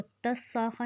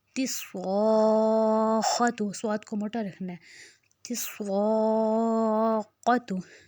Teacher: خاتو کو ہم نے نہیں کرنا لمبا، صاد کو ہم نے موٹا رکھنا ہے، خوا کو ہم نے موٹا رکھنا ہے، تا کو ہم نے پتلا رکھنا ہے، اس کو تس ساخا نہیں کر دینا. تس، تے کو پتلا اور صاد کو موٹا.